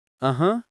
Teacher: And when you say uh-huh, with a low dip, that's the third tone.